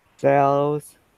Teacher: Because when I touch No, when I'm saying the word cells, my tongue gets very close to the back of my teeth, but actually doesn't touch